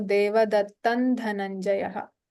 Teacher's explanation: Here, the Anuswara Devadattam takes Nakara.